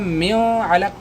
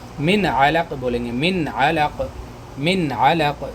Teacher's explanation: نون ساکن کے بعد حروف حلقی میں سے عین آ رہا ہے، اس لیے اس کو من علق بولیں گے، من علق، من علق، میو علق نہیں، ظاہر کر کے پڑھیں گے۔ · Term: اظہار